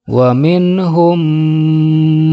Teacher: hukumnya adalah idgham mimi atau idgham mutamatsilain dinamakan idghom mimi sebab ada mim sukun bertemu dengan huruf mim nah disini ketika dibaca huruf mim nya harus didengungkan